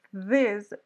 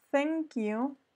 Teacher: sordo quiere decir que no genera vibración en las cuerdas vocales cuando yo digo this ahí hay una vibración cierto cuando yo digo thank you es más suave y ahí ya no hay vibración